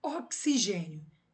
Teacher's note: O X tem som de KS, então eu tenho um encontro de duas consoantes quando eu pronuncio oxigênio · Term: encontro consonantal